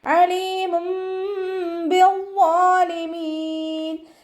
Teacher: അയിനിൻ്റെ മഖ്റജ് വരുന്നത് വസത്തുൽ ഹൽക്കാണ്. തൊണ്ടയുടെ മധ്യഭാഗം സൗണ്ടിനെ വ്യക്തമാക്കിയിട്ട് ഉച്ചരിക്കുക. · തെൻവീനിന് ശേഷം ഇഖ്ലാബിൻ്റെ അക്ഷരമായിട്ടുള്ള മീമ് വന്നു. തെൻവീനിലുള്ള നൂനിനെ മീമാക്കി മാറ്റിമറിച്ച് ഒന്നയോടുകൂടി ഒതുക്കൊടുക്കുക കേട്ടോ. ബിദ്ദാലിമീൻ വാ ഇസ്തിഅലാൻ്റെ ലെറ്ററാണ്, ഉയർത്തി ഉച്ചരിക്കേണ്ട 7 അക്ഷരങ്ങളിൽപ്പെട്ടതാണ്.